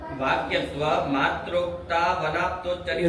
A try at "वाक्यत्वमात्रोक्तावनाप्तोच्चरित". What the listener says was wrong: रुक का है रहे हो वाक्यत्व के बाद? वाक्यत्व मात्रोक्त, वाक्यत्व मात्र यदि कहेंगे, इतना ही लक्षण यदि आप कहेंगे, कुछ ग्रंथ पढ़ो ध्यान से, कैसे कहाँ रुकना है, कहाँ पढ़ना है। क्या वाक्यत्व मात्रोक्त यदि इतना ही लक्षण करेंगे अनाप्तोच्चरित वाक्य अतिव्याप्ति।